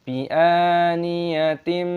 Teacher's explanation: sebuah kasr tanwin diikuti oleh sebuah mim, aturannya adalah idgham bighunah, disisipkan dengan bunyi sengau